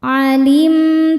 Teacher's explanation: Cara bacanya berdengung. Tahan dengungannya kurang lebih dua harakat · Di sini ada hukum izhar syafawi karena mim sukun tidak menghadapi mim atau ba melainkan menghadapi huruf ta. Cara bacanya mim sukun dibaca jelas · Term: ghunah